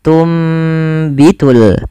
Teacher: kleab itu mengganti atau membalikkan apa yang dibalikkan pada dasarnya tunbitu karena ada huruf ba maka suara nunnya dirubah dan diganti dibalikkan menjadi suara huruf mim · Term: iqlab